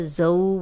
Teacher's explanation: ज़ौ वाव लीन है, जज़म वाली वाव पीछे ज़ा पे ज़बर, तो लंबा होने से बचाएंगे, नरमी से पढ़ेंगे।